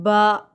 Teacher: دونوں ہونٹوں کے تری کے ملنے سے اور مسکان تھوڑی سی ہونٹوں پر ہو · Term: با کا مخارج